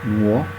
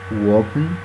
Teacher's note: The diphthong O changes its pronunciation, and it becomes in wo in the Jamaican English.